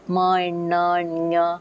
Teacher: Once they're able to distinguish how air is coming out through the mouth cavity, they're all the oral sounds, and in the case of ma and na, nya, they are nasal sounds. Much of the air is coming through the nasal cavity.